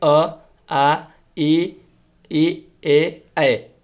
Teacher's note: जिन स्वरों के उच्चारण में होठ जो है वृत्तमुखी या गोलाकार नहीं होते हैं, ठीक है, तो वो अवृतमुखी स्वर कहलाते हैं।